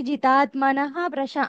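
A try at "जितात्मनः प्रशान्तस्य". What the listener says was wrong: అది అది కాదు ఉఫ్ అనే సౌండ్ రావాలి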